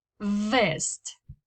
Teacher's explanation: For the other one, the little vida we know in Spanish, you pronounce it in English with your upper teeth touching your lower lip